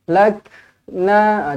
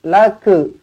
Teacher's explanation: Huruf kaf pastikan dibaca dengan hamas, dibaca dengan ada angin yang keluar daripada makhrajnya lah.